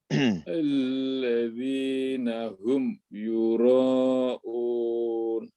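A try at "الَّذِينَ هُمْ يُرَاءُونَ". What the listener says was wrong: Iya, sejajarkan panjang antara ro dengan un ini, Pak. Sama-sama 4 harokat ya.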